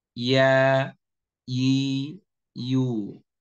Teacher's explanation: Dia sejajar antara tengah lidah sejajar dengan rahang atas. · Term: huruf ya